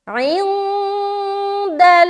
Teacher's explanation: چونکہ نون ساکن کے بعد دال ہے اسی لیے ہم یہاں پر اخفا کر رہے